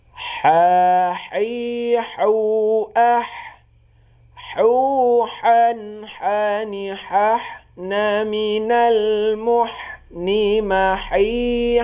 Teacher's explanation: ini bunyi huruf ha di tengah tenggorokan